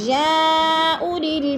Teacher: یا اولی مد متصل 4 الفی مد ہے، اس کو 4 الف کے برابر کھینچ کر پڑھنا ہے۔